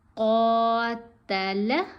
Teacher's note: قاف کی آواز کھینچے گی، باقی دونوں آوازیں چھوٹی